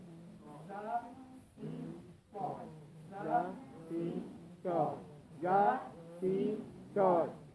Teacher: صفیریہ کا معنی ہوتا ہے سیٹی کی آواز ظاہر کرنا. ان کی ادائیگی میں معمولی سی سیٹی کی آواز کرنا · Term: حروف صفیریہ